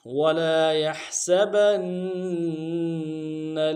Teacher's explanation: وَلَا يَحْسَبَنَّ واو کو نون سے ادا کریں گے، لام کے ساتھ الف مدہ ہے، ایک الف دال میں کھینچیں گے، یا کو ہا کے ساتھ ملانا ہے، ہا کو گہرائی سے ادا کریں گے، سین کی سیٹی باریک ہوگی